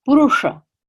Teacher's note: from pronunciation it is a retroflex the retroflex sound meaning that SH is pronounced in the back of the mouth with the tongue curled back against the palette